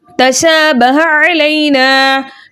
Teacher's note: शीन के ऊपर खड़ा ज़बर है, खड़े ज़बर को दो हरकत की मिकदार खींचकर पढ़ते हैं।